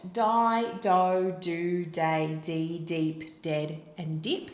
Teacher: I know that D is a voiced sound. I know that it's a plosive. I know that it is alveolar, where it's made.